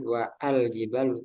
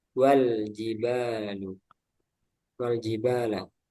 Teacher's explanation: Jadi ini bukan harokat domah, melainkan raksu shad, kepala shad. Yang mana alif ketika berada di tengah kalimat tidak dibaca. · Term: hamzah wasal